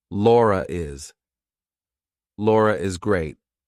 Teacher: So if I have to link my name to something else that's a vowel, I have to put an R in there. So I say, Laura is. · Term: intrusive R